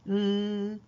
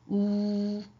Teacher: 우. 자,을 발음할 때는 입술 모양이 평평하고 옆으로 쭉 가니까 평평하고 우를 발음할 때는 입술 모양이 동그랗다